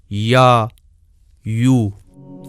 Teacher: اس میں زبان کا درمیانی حصہ اوپر کو اٹھتا ہے اور اس کا مخرج اس جگہ تنگ ہو جاتا ہے جہاں ہم چھوٹا سا سفید نقطہ دیکھ رہے ہیں، جیسے یا، یو۔